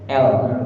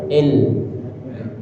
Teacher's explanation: sekarang kita pindahkan ujung lidah kita di belakang gigi seri atas kita